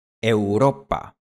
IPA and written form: eu̯.ˈɾo.pa (Europa)